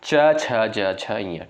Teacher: च वर्ग का उच्चारण होता है भाई ताल से यानी तालव्य से